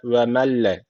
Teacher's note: cezim nunundan sonra lam gelmiş. O zaman burada idgamı bilagune var. Yani şu L harfini şeddeli okunmamız gerekiyor.